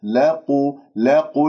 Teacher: لا تفخم اللام بسبب القاف المضمومة مفخمة مرتبة ثالثة